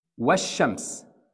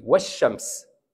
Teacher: From واو, jump to شين directly. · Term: hidden لام